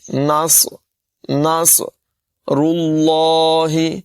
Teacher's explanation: صاد کی آواز میں سیٹی پیدا کریں گے اور اس کو پر ادا کریں گے۔ نصر، نصر اللہ، را کی ادائیگی بھی پر ہوگی اور لفظ اللہ کو بھی پر پڑھیں گے۔